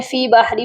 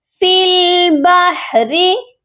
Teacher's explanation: بہت سے لوگ مسٹیک کرتے ہیں، فی باہری پڑھ دیتے ہیں، فا کو لام کے ساتھ ملانا ہے، درمیان میں یا اور الف خالی ہیں، ان کو ہم نہیں پڑھیں گے ، تو یہ پڑھا جائے گا فل، فی نہیں پڑھا جائے